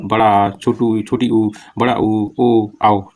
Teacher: जीवा का पिछला पिछला भाग क्रियाशील रहता है